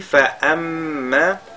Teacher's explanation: le mime est mushaddada, on fait al-ghunna